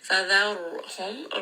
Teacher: Ra here is going to be heavy because the letter before has fatha. It also is a letter of tawassut.